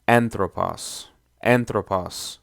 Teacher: it has a short Omicron in the last syllable again according to erasmian pronunciation so it's pronounced as anthropause the acute accent appears on the